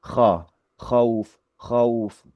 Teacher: Khauf itu di situ khauf, bukan bukan apa istilahnya, bukan khauf tapi khauf, khauf gitu ya. Bacaan kho itu diucapkan fathah ya, ya gitu ya. Tapi meskipun tebal tapi tetap fathah itu. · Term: bacaan diftong